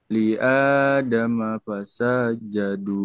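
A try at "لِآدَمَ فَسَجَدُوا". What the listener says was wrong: Sanya panjang apa pendek? Pendek. Heeh. Kenapa dipanjangin?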